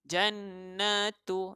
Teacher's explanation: Jannatu, di sini ada nun yang bertanda syaddah, so saya dah terangkan nun yang bertanda syaddah atau nun kita tekankan merupakan wajib dengung, wajibul ghunnah. Nun yang kita warnakan warna merah, syaddah ni warna merah kerana dia ada kelainan sedikit dengan syaddah yang lain.